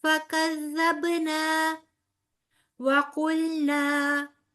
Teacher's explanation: پہلے نا کے آگے بھی الف مدہ، دوسرے نا کے آگے بھی الف مدہ، لہٰذا دونوں 2 کاؤنٹس لمبے ہوں گے